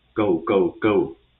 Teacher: The fourth tone is a falling tone, similar to stress in English